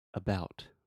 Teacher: short, it's really soft. I'm reducing the stress and I'm putting the stress on the bout. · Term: schwa